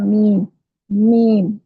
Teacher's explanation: मीम होठों के अंदरूनी खुशकी हिस्सों को आपस में मिलाने से अदा होता है।